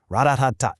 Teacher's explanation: every single syllable gets roughly the exact same amount of time and weight, creating what linguists sometimes call a machine gun or staccato rhythm, ra-da-ta-ta. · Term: syllable-timed